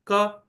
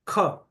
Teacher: हम खुद फील कर सकते हैं कि मुख के सामने रखें और उच्चारित करें क और ख। क ख तो जब ख करते करते हैं तभी हमें हाथ पर महसूस हो रहा है कि ज्यादा वायु उससे बाहर आ रही है। तो यह दूसरा जो था वो महाप्राण था।